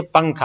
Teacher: نون کی آواز کو صاف نہیں بولیں گے بلکہ اس کو ناک میں تھوڑا چھپا کے پڑھیں گے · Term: اخفا